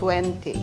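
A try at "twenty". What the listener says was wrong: identify, you don't pronounce the letter T. Omeo, poeo. Hindi mo sinasabi yung T.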